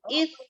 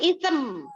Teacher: jadi abis is sempurna terus baru mulut bibirnya nutup.